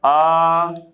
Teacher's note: ह्रस्व का 2 गुना अर्थात 2 मात्रा काल का समय लगता है। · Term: दीर्घ स्वर